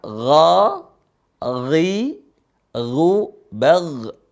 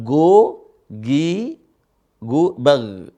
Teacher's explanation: Bukan seperti mengucap huruf g, bukan. Gha di situ ada namanya ada gargarah.